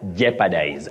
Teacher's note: the O in that word is Silent not pronounced